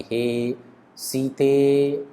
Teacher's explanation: सीते जो स्वर है वह प्लुत स्वर है और यह एक प्रकार का स्वर है, लेकिन इसको एक तरह से लंबा खींच दिया गया है